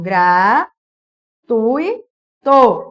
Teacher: reparem que o i é rápido